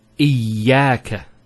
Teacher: Notice the ya, it's a double vowel because of the shadda there. Iyaka. It's not iyaka, iyaka.